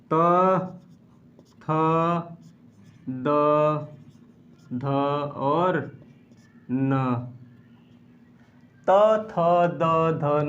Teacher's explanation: ये जब भी हम इसका उच्चारण करते हैं तो हमारी जो जिह्वा है वह कहीं न कहीं दंत को स्पर्श करते हुए बाहर निकलती है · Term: दंत ध्वनियाँ